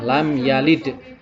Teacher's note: Jadi dalam membaca da adalah dengan menggunakan qalqalah